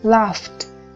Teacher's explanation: Vậy thì cái đuôi ed sẽ đọc thành t, cũng vô thanh luôn. Hoặc ở đây laugh, tận cùng là f, thì nó phải là vô thanh, cho nên gắn với âm ed sẽ là t, laughed, cũng là vô thanh luôn.